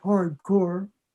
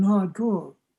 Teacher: New Yorkers sometimes pronounce the /r/ in words like hard core and sometimes do not